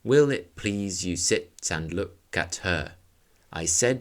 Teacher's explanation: the meter Browning uses iambic pentameter throughout the poem which is the controlled heartbeat rhythm of 10 syllable lines with every second syllable stressed